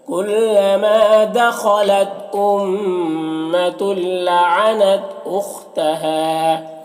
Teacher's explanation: تل یہاں پر تنوین کے بعد لام حروف یرملون میں سے، تو تنوین کو لام سے ملا کر بغیر غنہ کے پڑھیں گے، اس کو ادغام تام کہتے ہیں